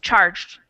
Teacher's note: the soft G because it's a G+ an e sound and the ed does not make an extra syllable